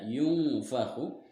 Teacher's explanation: nun sukun bertemu huruf fa. Maka cara membacanya samar dengan dengung dan ditahan 2 harokat. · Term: ikhfa